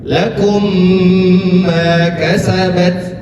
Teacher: Cara membacanya didengungkan. Lakum ma kasabat, ditahan.